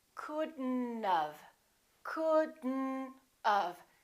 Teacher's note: don't pronounce the o don't pronounce the T · We pronounce the D and then we connect the D next to the N, and then the O disappears, but the T also disappears.